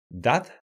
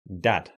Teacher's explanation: to make the d sound your tongue touches your teeth but in english this doesn't happen your tongue touches the ridge of your mouth behind your teeth